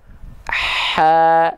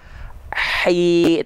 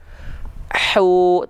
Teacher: Nih, misalnya huruf H kecil, kenapa dia mengalir nafas? Karena dia disandingkan dengan sifat rokhwah mengalir suara.